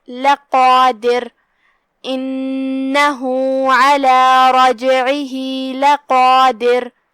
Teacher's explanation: آخری میں را کا حکم ہے ترقیق، اگر ہم اس پہ روکیں گے تو، کیونکہ جب اس پہ روکیں گے تو جزم سے روکیں گے اور اس سے پہلے والا حرف ہے دال اور اس کے نیچے زیر، لہذا را کا حکم ہے ترقیق۔